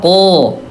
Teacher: pangkal lidah yang bertemu dengan langit-langit yang lunak yang bersejajaran dengannya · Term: huruf qaf